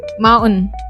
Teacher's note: But in American accent, you will say mountain. You're just dropping the T sound there. You're just contracting it. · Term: hidden T